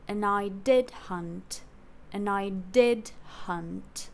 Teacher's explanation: hunt is just like lagging behind on um on a low note like a tale of did · We start lower, ənaɪ, then we jump up and fall on did. That's a high fall. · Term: lower note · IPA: /ənaɪ 'dɪd hʌnt/